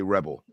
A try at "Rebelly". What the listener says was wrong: It's rebelly. You literally pronounce it rebel with an E at the end of it.